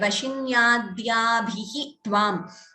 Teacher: Here this dhya, it is not a mahaprana.